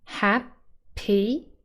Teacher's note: we have two syllables happy and the first syllable is stressed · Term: word stress